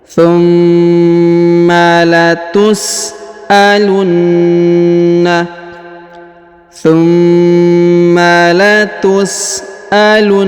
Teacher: ini karena terdapat tanda tasdid tummaalunna huruf sa berharakat sukun latusalunna Huruf na ditahan dan ditekan karena terdapat tanda tasdid